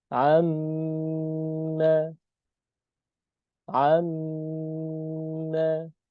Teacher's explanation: Ketika mim tasydid maka berarti ada dua huruf mim. Maka hmm, dua ketukan. Disatukan. Amma, amma.